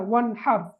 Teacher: அப்ப வன்ஹர் சுக்கூன் செய்யப்பட்ட நூனுக்கு பிறகு இல்ஹாருடைய எழுத்து ஹா வந்திருக்குது. எனவே நாங்க சுக்கூன் செய்யப்பட்ட நூனை வெளிப்படுத்தி ராகமின்றி ஓத வேண்டும்